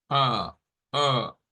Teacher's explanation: Pero que en el caso de ser el artículo o el pronombre, como en el caso de la canción, que es un artículo o pronombre, en Portugal hacen lo que vendría siendo esa A, esa retardada o hacia atrás